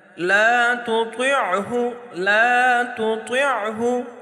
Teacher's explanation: طوا کو موٹا پڑھیں گے لیکن تا باریک ہوگی، تو یہ فرق ہم نے کرنا ہے.